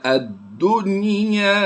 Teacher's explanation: نون ساکن کے بعد حروف یرملون میں سے یا آیا ہے تو ہم نے یہاں پر غنہ نہیں کرنا، بلکہ یہ اظہار مطلق ہوتا ہے۔